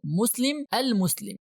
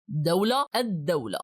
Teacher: In the first noun we pronounced the full al, but in the second one we pronounced only the alif of al and we skipped the lam.